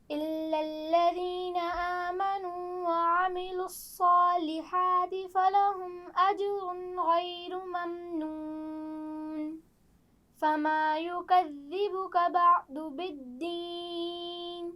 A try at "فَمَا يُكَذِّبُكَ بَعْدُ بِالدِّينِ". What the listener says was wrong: آئین کو ٹھیک سے ادا کیجیے۔ فما يكذبك بعد بالدین۔ شاباش، لیکن آپ آئین کے مخرج کی مشق جاری رکھیے، ٹھیک ہے؟